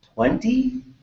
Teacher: So you rise the tone at the end to signal that I am kind of asking a question